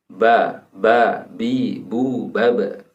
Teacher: Saat huruf ba diucapkan, pengucapannya dilakukan dengan kedua bibir · Ketika ba dirumuskan ada di syafatain, ada di kedua bibir, maka memungkinkan ba itu masih dibaca ba atau ba, bi, bu, baba.